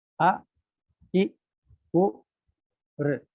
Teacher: ये ऋ जो है ये भी लघु है। जितना समय लगता है आ इ उ के उच्चारण में, उतना ही समय लगता है ऋ के उच्चारण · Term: ह्रस्व